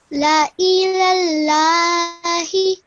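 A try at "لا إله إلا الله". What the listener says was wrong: When you join this lam to this lam, make sure you do it a bit more with your mouth, a bit more rounder, okay? Now when you're pausing, this kasra is replaced with a sukoon on the ha, okay?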